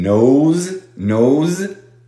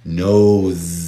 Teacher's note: La S en nose, nose, se pronuncia con vibración.